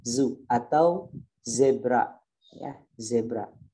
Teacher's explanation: ada suara desiran suara yang menyerupai lebah · ujung lidahnya turun ke gigi seri bawah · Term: huruf dza